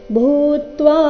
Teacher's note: ಭೂತ್ವ ಎರಡು ದೀರ್ಘ ಭೂ ಮಹಾಪ್ರಾಣ ದೀರ್ಘ